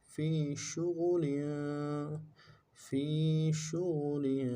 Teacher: फा को या के साथ मिलाना है, या मद्दा है, एक अलिफ दाल में खींचेंगे, शीन को तफशी में वाज़े करेंगे और गैन को मोटा अदा करेंगे, लाम की तनवीन में, तनवीन है नाम के नीचे, उन्ने के साथ पढ़ेंगे।